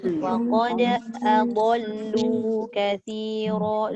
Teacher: Lu tu tak boleh pendek. Dia kena panjang sebab dia ada huruf waw mat. Walaupun kita nampak ada alif ziyadah tapi dia tetap ada mat iaitu waw kan.